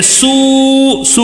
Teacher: واوے مدہ ہے، واو ساکن سے پہلے پیش ہے، اس کے لیے یہاں پہ کھینچ رہے ہیں